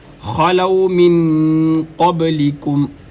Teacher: اگر اپنی زبان کے درمیانی حصے کو اوپر والے تالو کے نرم حصے کے ساتھ لگائیں گے تو قاف ادا ہوگی۔ قبلکم با حروف قلقلہ میں سے ہے، لہٰذا اس کو ادا کرتے ہوئے قلقلہ کیا جائے گا۔ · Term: قاف موٹا